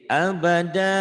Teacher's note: tanwin dihilangkan dibaca panjang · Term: mad iwad